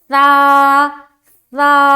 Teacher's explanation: जबान की नोक हल्की सी बाहर, ऊपर और नीचे की दांतों के नीचे दबी होगी और हम ओपन करेंगे मुंह को